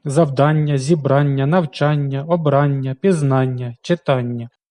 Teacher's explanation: віддієслівні іменники середнього роду на Ання в яких більше двох складів мають наголос як правило на суфіксі